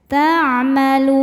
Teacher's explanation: Maka ketika berhenti lamnya ini panjang, boleh 2 atau 4 atau 6 harokat asal konsisten dalam sekali baca. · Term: mad arid li sukun